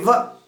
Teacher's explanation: व यहाँ दांत के बीच में और ओष्ठ के बीच में, तो दंतोष्ठी है।